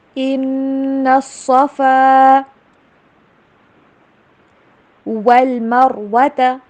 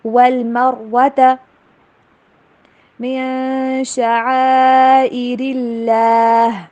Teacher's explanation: واو کے اوپر ہونٹوں کو گول کرنا ہے، را کو موٹا